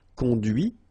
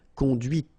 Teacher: final T is not pronounced, conduit, here, and then the feminine, conduite.